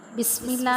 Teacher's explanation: بسم اللہ میں سین کو ہم واضح کر کے پڑھتے ہیں، سیٹی کی سی آواز آتی ہے۔